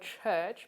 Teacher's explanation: followed by a fricative there are only two affricates in english a voiceless palato-alveolar affricate so the word church both begins and ends with this sound